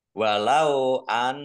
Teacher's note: Nun tasdid ya dibaca ghunah atau dibaca mendengung ini biar mendengung maka harus ditahan